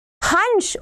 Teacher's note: नाक से भी ध्वनि निकल रही है और मुख से भी निकल रही तो अनुनासिक होगा